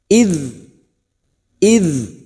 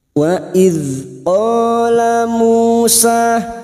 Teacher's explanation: Wa idh, huruf dzal sukun, hati-hati memantul. Huruf dzal sukun yang memiliki sifat jahar dan rikhwah.